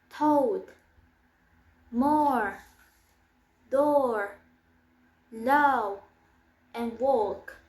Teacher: Place of articulation is middle back rounded and manner of articulation is long forward.